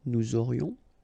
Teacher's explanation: final S not pronounced, and then you've got this liaison